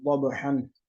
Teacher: زواد کو موٹا کر کے پڑھیں گے